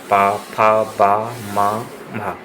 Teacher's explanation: ये होठों का स्पर्श करते हैं।